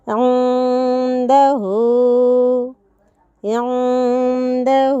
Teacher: आइन की जगह हमज़ा पढ़ने से बचना है, नून को गुन्ना करना है क्योंकि यहाँ पर اخفا کی تختی موجود ہے، اور ہا کو مد کی طرح، مد منفصل کی طرح پڑھنا ہے۔